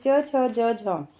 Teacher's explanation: जिन व्यंजनों के उच्चारण में स्पर्श का समय अपेक्षाकृत अधिक होता है और उच्चारण के बाद वाला भाग संघर्षी हो जाता है। वे स्पर्श संघर्षी कहलाते हैं।